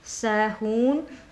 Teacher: यहाँ पर वाव मद्दा हो रहा है तो एक अलिफ की मक़दार खींच के अदा करिएगा